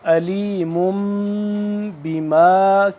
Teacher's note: تو علیم کے بعد آ رہا ہے با، تو یہاں پہ بھی اخفا کہلائے گا، یعنی کہ نون ساکن اور تنوین اور میم ساکن جس کے بعد با ہو کی آواز کو ناک میں لے کے جانا، تھوڑی دیر چھپا کے پڑھنا، اس کو کہتے ہیں اخفا۔